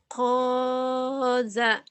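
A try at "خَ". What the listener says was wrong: Titiknya di atas, bukan di bawah.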